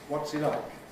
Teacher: So a High Head and a High Fall (Nucleus). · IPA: ˈwɒts i ˋ_laɪk_